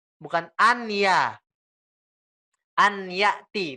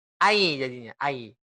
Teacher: Seketika kita bilang ai pasti masuk ke hidung. Ayati ya. Ai masuk ke hidung. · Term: idgham bi gunnah